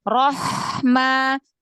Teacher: ha punya sifat hamas, punya sifat rokhwah